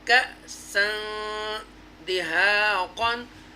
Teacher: ٹوچ کریں گے، جھٹکا دیں گے کیونکہ حمزہ ساکن ہے